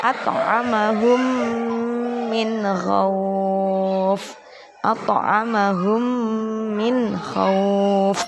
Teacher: ada mim sukun bertemu dengan mim, harus dibaca dengung 1 alif atau 2 harokat. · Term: idgham misli